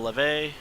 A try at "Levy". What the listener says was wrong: It's Levy. may be French, but that Y thing still goes E.